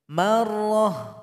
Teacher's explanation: Jadi ta marbuto nggak bisa seperti itu. Jadi cara bacanya dia mesti menjadi huruf H, hilang titik dan baris 2-nya.